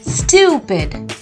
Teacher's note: you have to stress on the u syllable